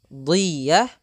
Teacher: do itu makhrajnya, yaitu sisi lidah kita menempel dengan gigi raham atas ya. Boleh kanan, boleh kiri, kedua-duanya juga boleh.